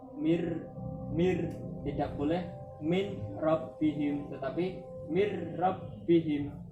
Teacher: Nah, nun sukun bertemu dengan ro. Nunnya ini suaranya hilang, kemudian diganti suara ro.